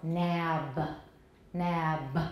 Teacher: if we release a voiced stop then we're going to get a little schwa